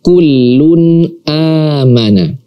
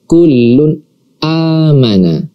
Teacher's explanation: maka kita baca nun sukun atau nun mati ini dan tanwin ini dengan jelas. Tidak kita dengungkan, apalagi kita samarkan. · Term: idhar halqi